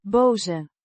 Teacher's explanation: Boze Means angry or mad, pronounced boh-zeh. with a short O sound similar to the o in hot and a voiced z sound